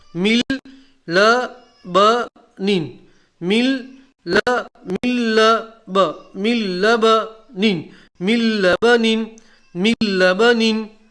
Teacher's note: تنوین کے بعد لام آیا، تنوین کا لام میں ادغام کر دیا